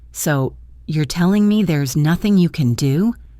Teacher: I used a high rising tone at the end of my sentence, the kind we use for questions.